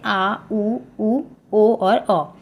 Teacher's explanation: जिन स्वरों के उच्चारण में जीभ का पश्च भाग काम करता है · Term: पश्च स्वर